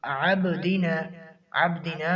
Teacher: عبدنا میں قلقلہ کا دوسرا درجہ ہے،